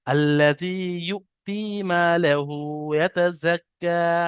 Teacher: হামজা সাকিন একটু ঝাটকা হবে